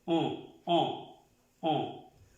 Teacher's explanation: Es un sonido nasal, como si pronunciáramos la O, pero no es la O. On. Como si nos tapáramos la nariz.